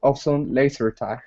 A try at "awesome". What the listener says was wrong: Let's go to the word awesome instead of awesome. Okay, take off that oo sound. It's only ah, awesome.